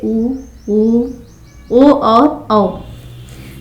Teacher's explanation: और पीछे से जो उच्चारित होते हैं जैसे ऊ, ऊ, ओ और औ, तो ये पश्च कहलाते हैं।